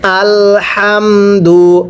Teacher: হা উচ্চারণের সময় গলার মাঝখান থেকে বাতাস বের করে পড়তে হবে